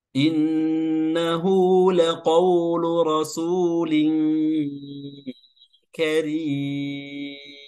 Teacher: kami akan memilih membacanya dengan tawassut yaitu empat harokat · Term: mad arid lisukun